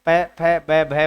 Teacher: जब ऐसे बोल के देखेंगे आप तो आपके होठ आपस में मिलते हैं। जब आपके होठ आपस में मिल रहे हैं इसका मतलब वो ओष्ठ वर्ण है।